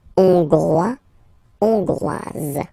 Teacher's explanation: final S not pronounced for the masculine form, and then you pronounce it here for the feminine form